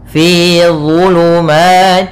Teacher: Kemudian zulumatillah, dha tebal, dha makhrajnya sama seperti huruf dal dan tha, tapi pangkal lidahnya dia terangkat dan idba. Pangkal lidahnya terangkat. Ya, pangkal lidahnya dia terangkat karena dia huruf isti'ala.